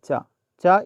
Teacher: चा का जो उच्चारण स्थान है वह तालु से है